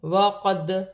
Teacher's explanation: دال ساکن ہے، حرف قلقلہ میں سے ہے، قلقلے کے ساتھ ادا کیا جائے گا